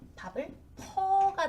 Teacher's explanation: 푸, 어나 아, 어미 활용을 하면 밥을 퍼가 되죠. 우가 탈락하는 이런 경우가 되고요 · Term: 모음 탈락